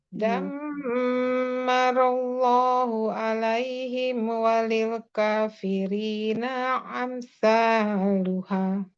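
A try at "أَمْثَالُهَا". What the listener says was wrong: Ya alif bukan aim. Amsaluha. Dammarallahu alaihim walil kafirina amsaluha. Ya, amsaluha.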